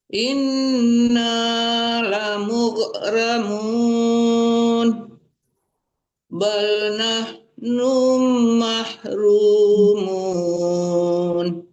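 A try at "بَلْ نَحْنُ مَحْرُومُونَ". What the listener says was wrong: Nunya jangan dipanjangin. Bal nahnu mahrumun.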